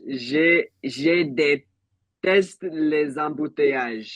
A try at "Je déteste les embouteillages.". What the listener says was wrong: Now, just one detail that I want to nip in the bud. It's not j'ai, it's je. Je déteste.